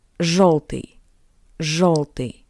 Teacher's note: after zh, yo sounds closer to the sound of o. O.